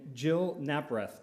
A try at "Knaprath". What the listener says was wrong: You do pronounce the K.